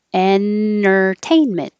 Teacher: the t because when the t comes after the n and the t is in the unstressed syllable you can skip it